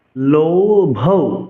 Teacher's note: লৌ দীর্ঘস্বর, ভৌ মহাপ্রাণ দীর্ঘস্বর।